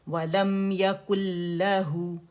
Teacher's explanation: لام کے اندر مرج ہو گیا مکمل طور پر غنے سمیت، تو یہاں کمپلیٹ مرجنگ وداؤٹ غنہ ہوگا، ٹھیک ہے، وَلَمْ يَكُنْ لَهُ، اور لام پہ ٹکنا نہیں ہے، اس کو غنہ نہیں بنانا ہے.